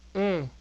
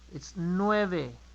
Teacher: The final sound in nueve, it's e. E. Don't make it like an A.